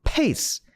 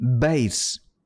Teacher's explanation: B 같은 경우에는 파열음이긴 하나 유성음 진동 해서 bass 이런 거 이제 입술을 이렇게 이렇게 입술을 좀 오므렸다라는 표현으로 부족할까요?